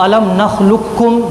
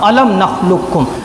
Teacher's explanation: Number ایک ادغام تام کے ساتھ علم نخلقکم جیسا مشہور ہی ہے، یعنی سیدھا لام کو سیدھا کاف میں ملا دینا اور قاف بالکل ختم، ادغام تام علم نخلقکم۔